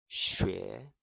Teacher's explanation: The X sound is like a soft she. Tongue forward near your teeth.